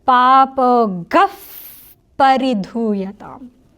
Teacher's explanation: But when you're chanting it in a shloka or a verse or anything like that, if there's a pa or a pa after the visarga takes on a fa sound. So it becomes papo gaf paridhuyatam.